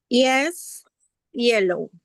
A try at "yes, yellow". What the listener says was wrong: Exactly.